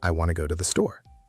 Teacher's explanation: want to becomes wanna because those words are unstressed and they blend together